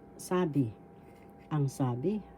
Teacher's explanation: isn't that's really long ang first syllable sa second syllable B the first syllable has the accent